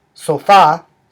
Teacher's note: the stress syllable is the second syllable or the last syllable